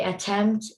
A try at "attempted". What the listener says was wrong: let's watch our endings on those words